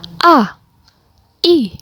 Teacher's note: nada yang terakhir itu seperti kita membentak